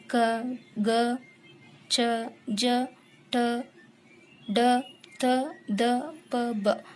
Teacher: ಪ್ರತಿ ವರ್ಗದಲ್ಲಿನ ಒಂದನೇ ಮತ್ತು ಮೂರನೇ ವರ್ಗಗಳು ಕಡಿಮೆ ಉಸಿರಿನ ಬಳಕೆಯಿಂದ ಉಚ್ಚರಿಸಲಾಗುವ ಅಕ್ಷರಗಳು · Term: ಅಲ್ಪಪ್ರಾಣ